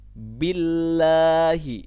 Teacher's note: lafadz allah nya lafadz jalalah nya ini dibaca secara tipis kenapa karena sebelum dapat jalalah ini adalah huruf yang berharakat kasrah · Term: tarqiq pada lafaz jalalah